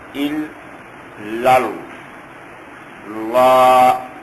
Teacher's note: ای لا الہ الہ لا الہ ال، اس کو ال نہیں پڑھیں گے کہ ہمارے ہاں عام طور پر جس کو پڑھتے ہیں کہ لا الہ ال درست نہیں ہے، اس کو منہ سمیٹ کر ادا کریں گے، ال ال کے باتیں دائیں بائیں نہ پھیلیں، منہ سمیٹ کر ادا کریں گے، ال ال لل۔ اب یہ دوسرا جو لام ہے اس کو ذرا موٹا ادا کریں گے، زبان کی جڑ کو ذرا اوپر کی طرف اٹھائیں گے